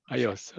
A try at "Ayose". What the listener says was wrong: Indeed, the final E, it is pronounced E in Spanish, so it'd be Ayose.